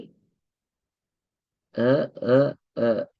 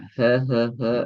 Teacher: அப்ப இரண்டுமே தொண்டையின் மூலமாக உச்சரிக்கப்பட்டதால இது நாங்க தொண்டையினுடைய எழுத்துக்கள் என்று நாங்க சொல்றோம்